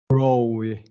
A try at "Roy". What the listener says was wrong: So I'm hearing like you're adding a W sound in there.